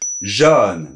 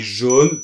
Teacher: Non, moi je dis jaune plutôt fermé, c’est la norme.